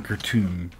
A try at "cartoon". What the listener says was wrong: Did you just say cartoon to rhyme with your pronunciation of raccoon? You said cartoon.